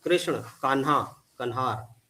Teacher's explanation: श और ण जो है ये न और ह में परिवर्तित हो जाता है